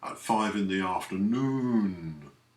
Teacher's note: dragging out the noon into two syllables or two beats